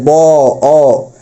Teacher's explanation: এই ব উচ্চারণের ক্ষেত্রে বর পরে দেখবেন ছোট্ট করে একটা অ উচ্চারণ হচ্ছে